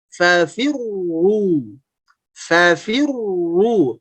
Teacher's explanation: Tapi begitu masuk ke tasdid, langsung monyong fafirru. Sehingga suaranya tebal.